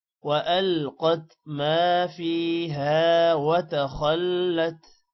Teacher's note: ما کے الف کو بھی لمبا کریں گے اور فیہا کا جو الف ہے اس کو بھی لمبا کرنا ہے۔ وَأَلْقَتْ مَا فِيهَا وَتَخَلَّتْ، خا موٹا ہوگا۔